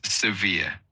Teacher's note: the word severe is pronounced as severe with the emphasis on the second syllable